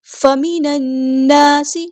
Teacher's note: لام یہاں پر لام شمسی ہے، اس کو ظاہر نہیں کرنا، نون پہ غنہ زمان نہیں ہو رہا ہے، 2 حرکت یعنی 2 کاؤنٹ رکنا ہے، الف مد آیا 2 کاؤنٹ لمبا کرنا ہے، سین کی سیٹی ہم نے واضح کرنی ہے۔